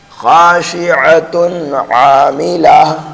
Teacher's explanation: تو یہاں تنوین کی جو آواز ہے وہ ظاہر کر کے پڑھیں گے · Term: اظہار حلقی